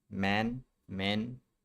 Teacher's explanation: For men, the lips start closed and we engage the vocal cords for the m.